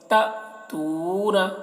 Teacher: تو کو کھینچ رہے ہیں کیونکہ واو کے اوپر جزم ہے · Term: واو مدہ